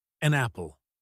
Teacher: the phrase an apple is often pronounced like a napple, because the N sound from an connects directly to the A sound of apple. Repeat, an apple. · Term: Linking